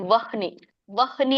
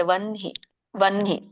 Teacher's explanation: ಹ ಫಸ್ಟ್ ಹೇಳಿದ್ರೆ ಗಂಟಲಿಂದ ಬರುತ್ತೆ ವನ್ಹಿ ಅಂತ ಹೇಳಿದ್ರೆ ಎದೆಗೆ ಬರುತ್ತೆ ವನ್ಹಿ ವನ್ಹಿ ಬಟ್ ರೈಟ್ ಇಸ್ ವನ್ಹಿ ವಹನಿ ಅಂತ ಹೇಳಬಾರದು ವನ್ಹಿ ಅಂತ